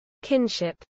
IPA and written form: ˈkɪnʃɪp (kinship)